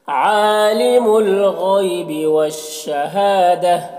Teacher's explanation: غین کو پر پڑھیں گے، یہ حروف مستعلیہ میں سے ہے، یالین سے نرم آواز کے ساتھ جلد پڑھیں گے۔